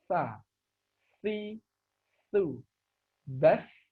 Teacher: ujung lidah kita menyentuh dua gigi seri bagian atas sehingga keluar nafas dan suara yang mengalir